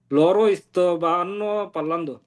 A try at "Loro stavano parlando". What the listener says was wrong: লরো ইস্তবানো না, লরো ইস্তাবানো। লরো ইস্তাবানো পারলান্দো।